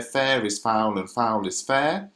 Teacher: Those are the words that are stressed. So it goes stressed, unstressed, stressed, unstressed, stressed, unstressed, stressed. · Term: trochaic tetrameter